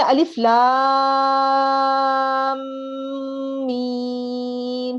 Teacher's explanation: میم پر تشدید کی آواز ہے، تشدید کا سائن ہے، تو اس کا مطلب ہے میم پر غنہ بھی کرنا ہے · لام کو بھی 5 سے 6 الف کے برابر لمبا کرنا ہے، میم کو بھی 5 سے 6 الف کے برابر لمبا کرنا ہے، اور میم پر تشدید کی آواز ہے ، تشدید کا سائن ہے، تو اس کا مطلب ہے میم